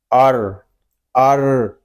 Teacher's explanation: را میں تھوڑا سا تکرار کریں گے کیونکہ را مشدد ہے